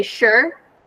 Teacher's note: it looks like s e but it's pronounced sure like with a sh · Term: sh sound